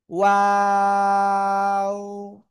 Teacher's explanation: দুই ঠোঁট গোল হবে, শুরুতে গোল, মাঝখানে দুই দিকে প্রসারিত হবে, শেষে এসে আবার গোল হবে।